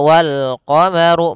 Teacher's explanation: runnya dibaca tebal karena dia huruf ra yang berharakat damah